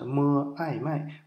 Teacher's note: 摸呢就是辅音，爱呢就是元音，它是双元音了